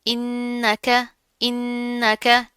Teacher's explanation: नून के ऊपर तशदीद है, गुन्ना करेंगे